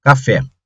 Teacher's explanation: quando você pronuncia essa palavra a última sílaba é mais forte ela é mais forte ela é chamada de sílaba tônica se